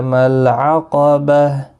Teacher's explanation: گول تا ہا ساکن پڑھیں گے وقف کی صورت میں